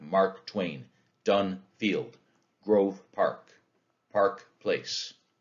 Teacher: It's two stressed syllables right in a row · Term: spondee